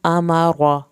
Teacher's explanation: امر را کو پر کر کے پڑھیں، را کی زبر نہیں لمبی کرنی